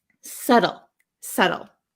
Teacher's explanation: in American English, this T becomes a flap T.